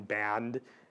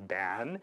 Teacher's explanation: final consonant cluster reduction, band being pronounced as ban